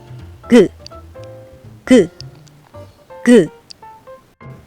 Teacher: 혀 안쪽을 위로 올리면서 목구멍 쪽을 막아요. 혀 안쪽이 보들보들한 입천장에 닿도록 위로 올려서 뭔가 막히는 것 같은 느낌을 느껴 보세요. 그렇게 준비하고 있다가 혀를 내리면서 말해요.